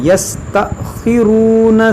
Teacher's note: یہ حمزہ ساکنہ ہے تو اس کو جھٹکا دے کر پڑھیں گے